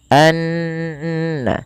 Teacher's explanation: Kemudian pelafal annallaha ada bacaan ghunah yang di mana ghunahnya adalah dimasukkan ke rongga hidung kita suaranya anna ya dan dia ditahan sepanjang dua harakat.